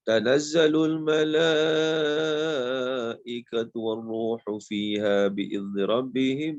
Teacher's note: Mala itu adalah mad wajib muttasil. Mad wajib muttasil. Dibaca dengan 5 harakat.